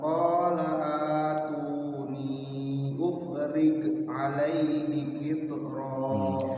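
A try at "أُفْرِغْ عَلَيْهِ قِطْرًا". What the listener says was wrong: Kalau ghain enggak mantul ya. Ufril lembutkan. Ufril alaihi qitra.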